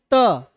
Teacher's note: त दांत का टच कर रहा है वो